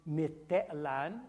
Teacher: Te'lan becomes Mitelan, the X is gone, the ejective is gone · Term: lenition